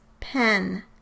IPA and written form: pʰɛ̃n (PEN)